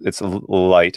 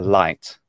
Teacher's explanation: when I say light as a Northeastern United States speaker of English, it's light and it's slightly velarized